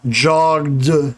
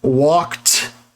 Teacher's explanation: spelling preserves the e d but jogged d sound right because the g is voiced so d is voiced the k is unvoiced so t is unvoiced